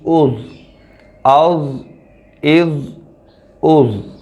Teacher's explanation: اب یہ حروف مستعلیہ میں سے ہے ضا، تو اس کو ہم پر پڑھیں گے